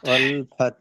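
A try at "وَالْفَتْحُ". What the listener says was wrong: লাস্টে হা কে উচ্চারণ করুন, ফাত। ফাত। ফাত। ফাত।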